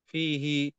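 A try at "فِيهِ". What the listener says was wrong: దీర్ఘం తీయాలి. ఇక్కడ దీర్ఘం ఉంది. యామద్ ఉంది.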